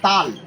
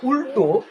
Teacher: কিন্তু এখানে যখন উল্টো, এই উল্লের সঙ্গে ল উচ্চারণ করবো তখন ল আমাদের কোথায় স্পর্শ হচ্ছে, মূর্ধাতে